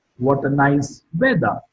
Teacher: Weather is marked with a falling tone.